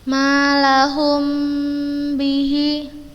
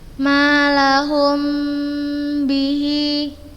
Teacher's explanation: Apabila mim sukun bertemu dengan huruf ba, cara membacanya menggunakan huruf mim dengan tempo yang dipanjangkan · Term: ikhfa syafawi